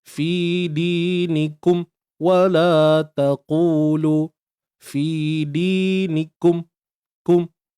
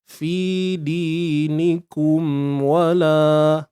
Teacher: pastikan mim yang mati tu ada unsur dengung aslinya tu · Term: izhar syafawi